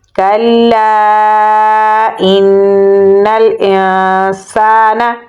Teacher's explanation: سین کو ہم لمبا پڑھیں گے کیونکہ آگے الف مدہ ہے